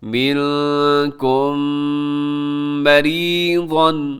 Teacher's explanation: منکم، پھر آگے جو ہے میم ساکن کے بعد میم آ گیا، میم ساکن کے بعد میم آ جائے تو وہاں پر ادغام ہوتا ہے جسے ادغام شفوی کہا جاتا ہے، اور اس کو ملا کر غنّے کے ساتھ پڑھا جاتا ہے